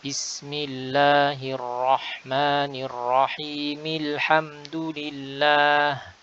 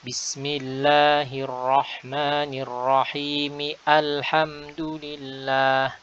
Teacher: Hamzah wasal ini dia ketika kita baca wasal atau menyambung dari kata sebelumnya maka dia gugur ya tidak dibaca